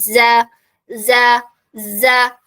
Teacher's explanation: ലെറ്റർ ആണോ എന്ന് ചോദിച്ചാൽ അതെ നാവിന്റെ പൊസിഷൻ നോക്കിയാൽ നമുക്ക് കാണാൻ പറ്റും നാവിന്റെ ബാക്ക് സൈഡ് എന്താണ് താഴ്ന്നിട്ടാണ് ഉള്ളത് റിലാക്സ് ആയിട്ടാണ് ഉള്ളത് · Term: ലൈറ്റ് ലെറ്റർ